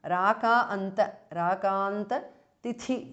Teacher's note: The second tha is mahapranah.